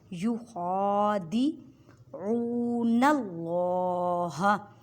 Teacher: عین کو حلق کے درمیان والے حصے سے ادا کریں اور عین کو ایک الف کی مقدار میں کھینچ کر پڑھیں کیونکہ واو ساکن سے پہلے پیش ہے تو واو مدہ کا قاعدہ ہو رہا ہے۔